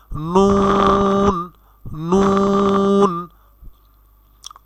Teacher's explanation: 9 নম্বর মাখরাজটিও same, জিহ্বার ঠিক সামনের অংশ অর্থাৎ জিহ্বার আগার সামনের ভাগ মানে জিহ্বার আগা, তার বরাবর উপরের সামনের দুটি দাঁত দিয়ে উচ্চারিত হয় 9 নম্বর মাখরাজ। অর্থাৎ জিহ্বার আগা সামনের উপরের দাঁতের গোড়ার সঙ্গে লাগাইয়া উচ্চারিত হয়, বা তালুর সঙ্গে, গোড়া বা তালুর সাথে লাগাইয়া উচ্চারিত হয় নুন।